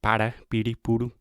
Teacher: So the tip of your tongue is touching the roof of your mouth when you say para, puru, puru. So this sound is actually a lot more similar to an English T or a D sound, and it has nothing to do with an American R sound, which makes it especially difficult and confusing and complicated. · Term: Portuguese R